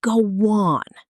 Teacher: a small W sound sneaks in between them